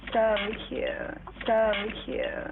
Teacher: Believe it or not, there's a scientific term for the way a Kardashian speaks, and it's vocal fry. It's a low, creaky vibration produced by a fluttering of the vocal cords.